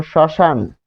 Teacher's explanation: শব্দের আদিতে বসলে মফলা অনুচ্চারিত থাকে, যেমন শ্মশান।